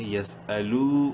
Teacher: یاسین زبر یس، حمزہ زبر آ، یس آ، لام واو پیش لو، واو مدہ ہے، لام کو ایک کلک برابر لمبا کریں گے